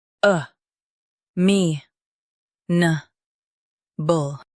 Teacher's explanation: Stress me and keep nuh soft. The uh is light.